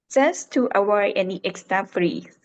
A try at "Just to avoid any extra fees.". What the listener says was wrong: Good. That was better.